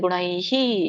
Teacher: ಇಲ್ಲಿ ಗುಣೈ ಐ ಚಿಹ್ನೆ ಇದೆಯಲ್ಲ, ಹಾಗಾಗಿ ನಮ್ಗೆ ವಿಸರ್ಗ ಕೂಡ ಐ ಅನ್ನುವಂಥ ಉಚ್ಚಾರಣೆ ಬರುತ್ತೆ, ಗುಣೈಹಿ. ಸೊ ಕೊನೆಗೆ ಹಿ ಅಂತ ಉಚ್ಚಾರಣೆ ಮಾಡ್ಬೇಕು, ಐ ಸ್ವರ ಕೂಡಿದಾಗ